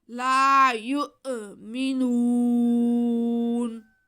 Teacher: یہ نو کی آواز کو ناک میں نہیں جانے دینا بلکہ منہ سے سیدھا باہر آنے دیں، اوپر کو نہ جانے دیں ورنہ لفظ پھر غلط ہو جاتا ہے.